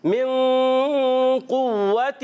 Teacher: یہاں من میں یہاں غنہ ہوگا, اخفا کا غنہ کریں گے, نون ساکن کے بعد قاف حروف اخفا میں سے ہے, اور یہاں قاف حروف مستعلیہ موٹے حروف میں سے اس کو موٹا کر کے پڑھیں گے.